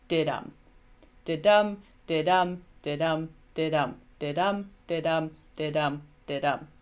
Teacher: The most commonly used and known is an iamb, so iambic meter. This is where you have a metrical foot of 2 syllables, which is unstressed and then stressed.